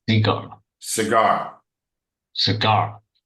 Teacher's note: the emphasis is on the second syllable